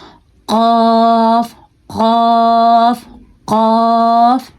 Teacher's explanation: حلق کا نیچے والا حصہ اوپر والے تالو سے ٹکراتا ہے, گلے میں جو تالو ہوتا ہے اس سے ٹکرا کے قاف نکلتا ہے. یہ موٹا قاف ہے جبکہ اگلا والا باریک قاف ہے.